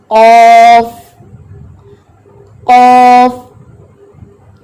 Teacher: جب زبان کی جڑ اٹھائیں گے تو وہ زبان ٹچ کرے گی اوپر حلق کے کوے سے اور یہ لیٹر خود بخود موٹا ہو جائے گا